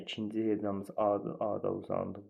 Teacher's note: İkinci hecanın saiti uzun tələffüz olunur.